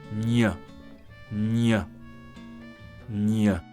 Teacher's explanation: In order to pronounce the sound ñ, you must place your tongue against the front of your palate and front teeth. Use your vocal cords so as to pronounce the sound n. · The sound ñ actually consists of two sounds. The sound n, followed by a short semi-vowel y